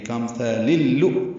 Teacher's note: حمزہ واو کی شکل میں جھٹکے سے ادا ہوگا ، پھر لام پر پیش ہے، معروف طریقے سے جلدی ادا · لام کو لام سے ملا دیں گے، کامثال اللؤ، یہ ادغام شمسی ہوا ہے جو لام سے ملا ہے